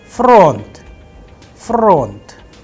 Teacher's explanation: the stress is on O, that is why the sound of O is under stress, and I am pronouncing with higher pitch on O. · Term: udarenie or the stress